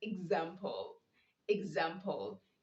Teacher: you say z because you have the ex before a stressed vowel. So the ex is changing to the sound z.